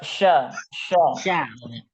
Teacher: sya itu suara nyebar. Nyebar ke Sya. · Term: shin tebal